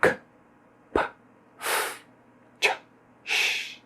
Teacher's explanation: São aqueles sons nos quais não há vibração das cordas vocais. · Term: sons não vozeados